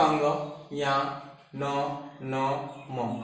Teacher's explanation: ये सभी का उच्चारण स्थान नासिका है। इसका मतलब नाक से निकलता है।